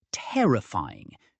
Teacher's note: terrifying is stressed on the second syllable